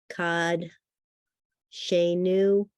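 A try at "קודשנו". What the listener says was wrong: Now, words that come from the root kadosh have or in it. It's kod. Kod shenu.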